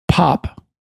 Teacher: I'm pronouncing it in a deliberate way with the final plosive, which you don't normally use in Arkansas English, you just say pop.